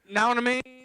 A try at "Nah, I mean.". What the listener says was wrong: putting too many syllables in there. It's, nah, man.